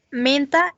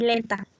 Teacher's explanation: una gran diferencia es que uno es nasal y el otro es oral, aunque sea lateral